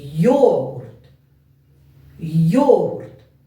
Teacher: наголос падає на перший склад на голосну о